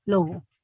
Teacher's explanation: Si va en medio de vocales, ¿verdad? Lo ideal es que se utilice la fricativa, al menos que el hablante haga un esfuerzo sobrehumano para decir lobo.